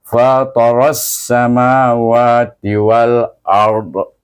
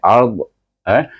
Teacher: Kemudian lidah kita disukunkan dekat huruf dot itu dot baris atas bila sukunkan tidak ada baris lah bagi dot itu. Cuma lahirkan mahraj dot itu iaitu tepi lidah pergi kepada geraham atas.